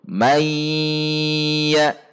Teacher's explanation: seharusnya dibaca Mei langsung masuk ke ya dan dijaga gunanya pada nun sukun meia jadi ada bunyi rongga hidung dan ada bunyi rongga mulut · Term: Idgham Bighunnah